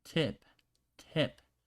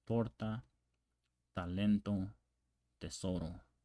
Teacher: in Spanish it's not as explosive and you place the tongue on the back of your front teeth